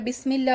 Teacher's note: সিনের একটা বাতাস এটা যদি বের না হয় বা এই যে একটা ভিসলিং একটা সাউন্ড এটা যদি বের না হয় দেন হচ্ছে আপনি প্রপার সিফাত থেকে আপনার হারফটা উচ্চারণ করেন নাই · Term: হামস